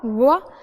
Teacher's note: व को बोलते समय दांत और ओठ व दोनों का इस्तेमाल होता है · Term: दंतोष्ठ